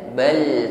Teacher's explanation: mengucapkan bal sukun kita tekan bal, tapi suaranya tidak boleh putus, tidak boleh tertahan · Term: tawassut